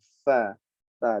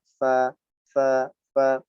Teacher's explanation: huruf fa juga mempunyai sifat rokhawah, suara yang memanjang.